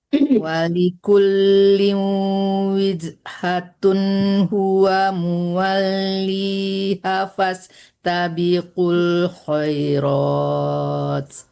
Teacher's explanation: tanwinnya harus jelas, jangan ada samaran ya, jangan lama tertahan di situ karena bukan dengung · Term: izhar